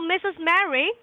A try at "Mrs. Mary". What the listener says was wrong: not Mistress Mary, it's Mrs. Mary. Slow down. Enunciate. Mrs. Mary, not Mistress Mary.